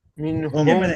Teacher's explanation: হ্যাঁ মিন হুমে কিন্তু গুণনা নাই, মিন হুম স্পষ্ট